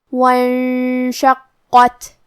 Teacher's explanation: یہاں حرف القاف ہے اور قاف کی ادائیگی زبان کے جڑ اور تالو کے نرم حصے سے ہے · شروعات میں الف ہے لیکن یہ حمزۃ وصل ہے. ہمیں حمزہ کو ظاہر نہیں کرنا ہے. واو کے بعد حرف النون کو پڑھیں گے.